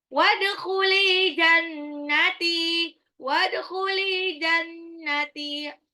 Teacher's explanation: Dalnya qalqalah sugra, lamnya matabi'i, nunnya gunah. Jannati, taknya matabi'i.